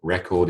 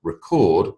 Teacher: record is a noun emphasis on the first syllable but record on the second syllable to record your voice